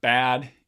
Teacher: has two voice stops on the edges of that syllable and then it has this low vowel a in the middle